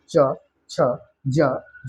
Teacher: वर्गीय व्यंजन है स्पर्शी स्पर्श संघर्षी व्यंजन किसे कहते हैं तो च वर्ग के उच्चारण में वायु कुछ संघर्ष के साथ निकलती है इसलिए इस वर्ग के व्यंजनों को है ना स्पर्श संघर्षी व्यंजन